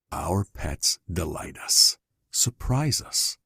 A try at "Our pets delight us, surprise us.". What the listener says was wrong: Choppy, right? Our pets. That's not the feeling that we were asked to deliver from the client, right? That's not on the first word.